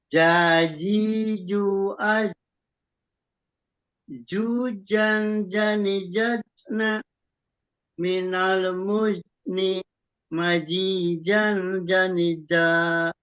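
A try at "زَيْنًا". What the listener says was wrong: Nah, kalau itu masih huruf jim, Pak. masih huruf jim, ya. Masih huruf jim. Za, z. Masih J.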